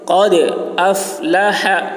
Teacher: دال میں قلقلہ، قاف کی آواز موٹی ہوگی